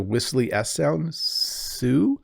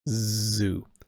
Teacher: So like the whistly S sound, Sue, or like a vibrating Z sound, which the Americans call Z, zoo.